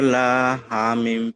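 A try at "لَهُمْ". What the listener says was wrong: লাহুম বলে টান হবে না, লাহুম।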